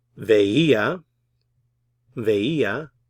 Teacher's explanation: Stress on the accented I.